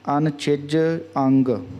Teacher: ਹਾਂਜੀ, ਇਹ ਜਿਹੜਾ ਪਾਠ ਹੈ ਅਨਛਿਜ, ਇੱਕ ਤਾਂ ਜਿਹੜਾ ਛੱਛਾ ਅੱਖਰ ਹੈ ਇਸ ਨੂੰ ਉੱਪਰ ਤਾਲੂ ਦੇ ਨਾਲ ਜੀਭ ਲਾ ਕੇ ਬੋਲਣਾ, ਅਤੇ ਇੱਕ ਇਸ ਨੂੰ ਨੰਨੇ ਔਰ ਛਿਜ ਦੇ ਵਿੱਚ ਡੈਸ਼ ਲਾ ਕੇ ਇਸ ਨੂੰ ਵੱਖਰਾ ਵੱਖਰਾ ਪਕਾਉਣ ਦੇ ਲਈ ਕਰ ਲੈਣਾ, ਅਤੇ ਇਕੱਠਾ ਪਾਠ ਕੱਸ ਕੇ ਬੋਲਣਾ ਅਨਛਿਜ ਅੰਗ।